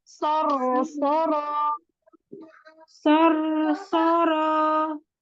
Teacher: Roh sukunya jangan mantul.